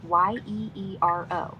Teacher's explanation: In Greek, it's pronounced yeero, like year but shorter, with a rolled r and stress on the first syllable